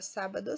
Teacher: é a sílaba mais forte de trás para frente é a antepenúltima portanto ela é proparoxítona